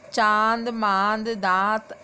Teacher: बेटा अनुस्वार का उच्चारण सिर्फ नाक से होता है, लेकिन अनुनासिक का उच्चारण नाक और मुंह दोनों से होता है